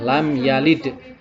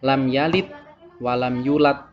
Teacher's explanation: Jadi dalam membaca da adalah dengan menggunakan qalqalah.